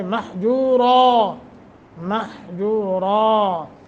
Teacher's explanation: نون تنوین کے بعد میم مشدد ہے تو اس کو غنّے کے ساتھ پڑھیں گے، را کو موٹا کریں گے